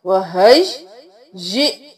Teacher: हमजा के ऊपर जज्म है तो झटका देंगे